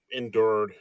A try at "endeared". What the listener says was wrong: Endeared, not endured. You said endured.